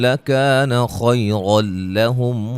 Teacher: نون تنوین کا ادغام بلا غنہ ہے، غنہ نہیں کریں گے